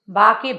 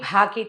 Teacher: బా అంటే అల్పప్రాణం, భా అనాలంటే మహాప్రాణ అక్షరాలు.